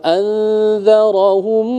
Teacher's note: ketika mim mati bertemu dengan ba ikhfa syafawi, dia ditekan selama 2 harakat